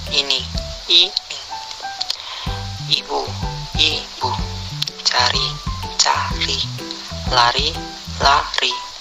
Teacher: Vokal I. Kriteria: vokal depan, tinggi atas, tak bundar, tertutup.